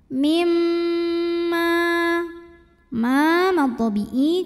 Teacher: karena mim bertasydid cara bacanya dengung bunyi m nya tahan kurang lebih 2 harokat sampai ada getaran halus ke hidung